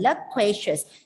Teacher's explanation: So you can see the schwa sound on the first and the last syllable, reducing it to loquacious. The stress is on the middle syllable